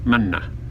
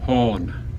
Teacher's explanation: I don't even really hear the nasal. It just kind of sounds like standard N to me. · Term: nasal N